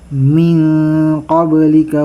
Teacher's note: Ito ay nun na bumangga ng qaf. Makapal ito na ikhfa. Kapag qaf, makapal yan.